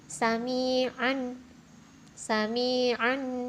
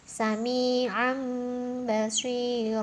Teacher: membalik atau mengganti bunyi nun sukun atau tanwin menjadi Bunyi mim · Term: iqlab